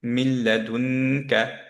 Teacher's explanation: এখন মিনের নুনের পরে, নুন সুকুনের পরে যেহেতু লাম আসলো, নুনটা কমপ্লিটলি গায়েব করে দিলাম, আমরা সাদ্দা দিয়ে দিলাম, তার মানে লামকে আমরা দুইবার পড়বো